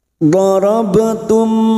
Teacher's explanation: Mim sukun dibaca jelas tanpa mendengung. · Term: idhar safawi